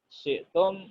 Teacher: syi'tum itu yang shin, yang wastul lisan, tapi ternyata dibaca dengan idgham juga ya.